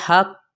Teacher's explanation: क़ाफ की पेश को हमने बढ़ाना नहीं लेकिन मोटा करके इसको पढ़ना है